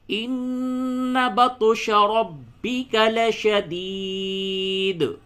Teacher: اور را کو پڑ کر کے پڑھیں گے کیونکہ را پہ زبر ہے